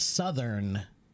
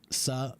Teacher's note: it's a voiced th sound